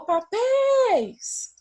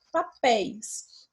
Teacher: Eu chamei papéis. E o mais forte foi o pés. Então, essa vai ser a sílaba tônica, que é oxítona.